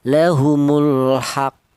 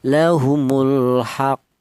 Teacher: Ditahan dua ketukan baru dipantulkan. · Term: qalqalah kubra